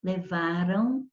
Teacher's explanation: Só que quando o verbo termina com som nasal e o levaram termina, esse AM tem um fraco som de ão. Levaram, tá vendo?